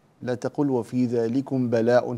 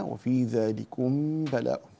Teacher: أخفي الميم عند الباء